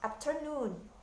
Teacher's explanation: Lalu ada 3 syllables dengan penekanan terakhir little, bigger. Berarti penekanannya di akhir suku kata atau di akhir syllables.